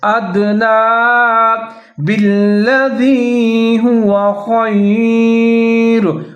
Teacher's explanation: تستبدلون الذی ہوا ادنا دال ساکن ہے تو یہاں پر بھی قلقلہ کر کے پڑھیں گے. ادنا نون کے اوپر کھڑا زبر ہے، ایک الف کے برابر آپ لمبا کر کے پڑھیں. ادنا بالذی ہوا خیر، ہوا ہا کو یہ دو آنکھوں والا ہے، اس کو بھی موٹا کر کے پڑھنا ہے.